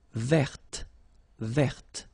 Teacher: So listen carefully. I don't say te, but it's t. Verte. Verte.